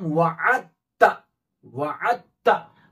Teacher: दाल पढ़ने में नहीं आएगा, साइलेंट रहेगा